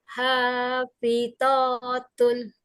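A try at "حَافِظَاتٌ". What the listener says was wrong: Nah, ini huruf uwo, bukan po tapi uwo, ada titiknya. Hafizatun.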